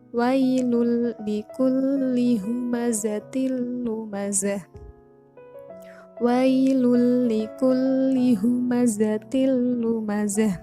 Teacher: huruf lam berharokat tanwin bertemu dengan lam. Jadi dibaca idgham bila gunah, dimasukkan dengan tanpa dengung